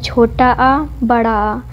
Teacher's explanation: छोटा आ, बड़ा आ हमारा कंठ से उच्चारित होता है